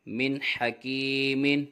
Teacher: میم نون زیر من، حا زبر حا، من حا، کاف یا زیر کی، من حکی، میم دو زیر من حکیم۔ یہاں پر بھی نون ساکن کے بعد حرف حلقی میں سے حا آ رہا ہے، اس لیے یہاں پر بھی اظہار ہوگا، غنہ نہیں کریں گے۔